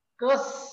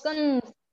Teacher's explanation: शब्द तोच राहतो पण नाकातून उच्चारल्यामुळे अर्थ बदलतात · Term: नासिक्य रंजन